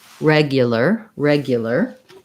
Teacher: ipa would be first syllable stress reg the glide ya regia because this letter u is unstressed it's going to be a schwa here and then the ar says an er sound so it sounds · a schwa here and then the ar says an er sound so it sounds like reg blur with length on reg